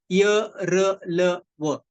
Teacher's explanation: य र ल व जो तालू को जहा का स्पर्श होता है वो हल्का सा होता है पूरा नहीं होता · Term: स्पृष्ट, ईषद स्पृष्ट